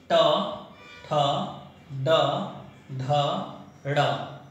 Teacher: उसी तरह से ट वर्ग मूर्धा, अपने जीभ के आगे वाले हिस्से को मोड़ करके टक्कर मारते हैं।